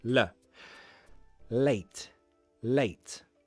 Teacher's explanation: My tongue will hit the alveolar ridge. You don't need to remember the name, but the skin part behind the top teeth. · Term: light L